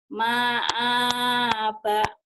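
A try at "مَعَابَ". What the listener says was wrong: Ma-nya pendek, Bu. A-nya yang panjang. Ma'aba gitu, Bu.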